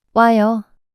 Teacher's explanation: the two vowels 오, and 아, are combined and pronounced as one single vowel 와, for a shorter and smoother pronunciation. So, the combination of 오, and 아요, becomes.